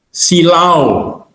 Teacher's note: Diftong, diftong itu gabungan vokal yang dibaca satu fonem. Contohnya silau, belakangnya ada A dan U, itu adalah diftong.